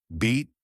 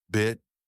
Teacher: your tongue is high up and towards the front of your mouth and your lips are stretched out more for the vowel I like in bit your tongue is a bit lower and your lips are more relaxed